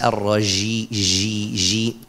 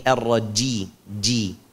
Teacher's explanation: huruf Jim enggak boleh dibaca dengan rakhaw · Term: syidah